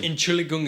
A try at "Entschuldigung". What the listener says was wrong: You gotta pronounce the D though. You keep missing the D. Entschuldigung. Entschuldigung.